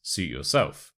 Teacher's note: the suit and yourself merge together almost as if it's one word